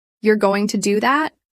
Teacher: With a rising tone, it indicates surprise or doubt.